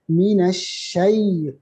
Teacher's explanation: jangan itu fathah menjadi alif. Minasyai, jangan. Minasyai, fathah itu satu harakat aja.